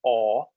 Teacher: there's one kind of o of a long backed rounded aw